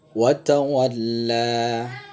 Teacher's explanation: bunyi Lah itu terhitung dua hitungan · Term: panjang biasa